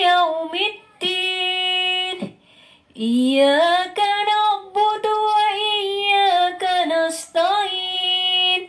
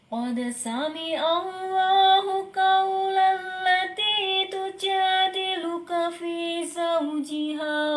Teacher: yang pertama itu pitch-nya tinggi ya, jadi kesannya itu semangat banget. Yang kedua, pitch-nya agak diturunkan, jadi lebih ke didengerin kayak ada nuansa sedih ya.